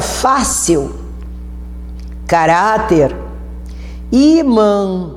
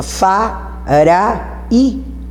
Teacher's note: você está vendo que a sílaba tônica é a penúltima. Fá, ra, i. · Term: paroxítonas